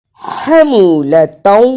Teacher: ہا کی آواز حلق سے رگڑ کر نکلتی ہے